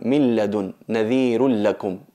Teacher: Existe a nivel de escritura, pero a nivel de pronunciación, a la hora de recitar, no se oye ninguna N en nuestra entonación. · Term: fusión completa